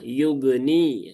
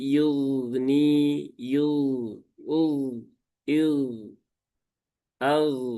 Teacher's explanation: Padahal huruf ghain dia tidak ada sifat qalqalah ya. Dia adanya sifat rokhawah, mengalir.